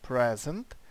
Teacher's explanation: йдемо далі що там у нас ще ось є іменник тежн наголос на перший склад